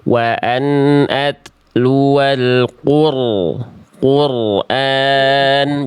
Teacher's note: Ro sukunnya sudah bagus getarannya. Sekarang tebalkan ro sukunnya ya. Diangkat pangkal lidah. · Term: roh sukun